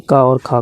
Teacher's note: का और खा का उच्चारण कंठ से होता है। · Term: कंठीय ध्वनियाँ